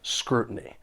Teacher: few collocations with this noun and they're all great to know for pronunciation the stress is on the first syllable